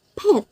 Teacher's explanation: in English the P sound is aspirated at the beginning of word like pet this puff of air after the sound is called aspiration · this puff of air after the sound is called aspiration marked by a superscript h